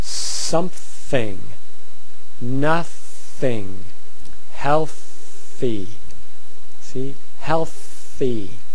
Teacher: voiceless th in the middle of the word